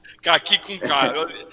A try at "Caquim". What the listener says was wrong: Caquim, com N no final, Quim, Caquim. Não é a fruta caqui, não.